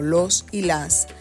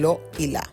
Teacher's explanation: A veces la s no solo se aspira, sino que directamente desaparece, sobre todo en los plurales o en las palabras como los y las [música] que se convierten en lo y la.